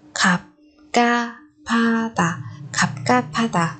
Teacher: Còn ở đây 받침표음 đi liền với phụ âm nhật thì chúng ta lại kết hợp nó lại thành phụ âm bật hơi tương ứng của nó. Cho nên 갑 và 하 chúng ta sẽ đọc thành 가 và 파 các bạn nhé.